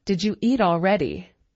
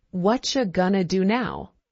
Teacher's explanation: Did you hear how did you became didja?